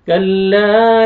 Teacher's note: لام الف مد ہے الف سے پہلے زبر آپ نے لام کو کھینچنا ہے